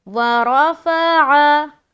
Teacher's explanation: आइन को हलक से निकालेंगे